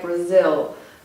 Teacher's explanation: the L at the end of Brazil, this also sounds a bit like a vowel